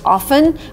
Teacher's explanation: I would just stick to often with a silent T